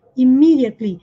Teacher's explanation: E esse primeiro E tem som de I, imi.